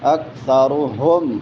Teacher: بل کاف باریک ہے، ثا نرم ہے، را موٹی ہوگی، اکثرهم ہا حلق کے آخری حصے سے جو سینے کے ساتھ ملا ہوا ہے وہاں سے ادا ہوگا